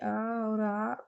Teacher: उच्चारण स्थान की दृष्टि से हिंदी के अ और आ कंठ स्वर हैं